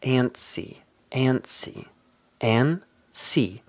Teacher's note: Notice here that we don't really pronounce the T.